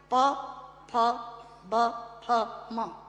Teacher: प फ ब फ म दोनों होंठ मिलाकर बोले जा सकते हैं। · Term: ओष्ठांग